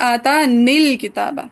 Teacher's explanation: اب جب یہ یا کا سکون پڑھیں گے تو ملاتے ہوئے ہو جائے گا آتا نیل کتابہ، ٹھیک ہے، کیونکہ التقاء ساکنین میں یا حذف ہو جائے گی